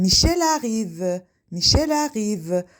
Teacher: Sonra əgər söz cümlə daxilində bir söz tələffüz olunan samitlə bitərsə, ikinci söz saitlə başlayarsa, bu zaman birinci sözün tələffüs olunan samiti ikinci sözün saiti ilə birləşərək bir hec əmələ gətirir.